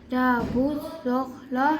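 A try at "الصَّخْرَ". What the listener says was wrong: صاد موٹا سیٹی کے ساتھ. جا بس صخرو. صخرو. خاؤ کو موٹا کرنا ہے. خر خر کی آواز آنی چاہیے. صخرو. صخرو. رو کو موٹا.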